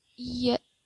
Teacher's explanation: the articulation of y is practically the same as that of a front closed vowel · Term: consonant y